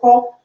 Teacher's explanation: কিন্তু যদি উচ্চারণ করেন খ, মুখের কাছে হাত উচ্চারণ করেন খ, দেখেন খ উচ্চারণ করার সময় দেখবেন যে বাতাস এসে আপনার হাতে লাগছে, তার মানে মহাপ্রাণ।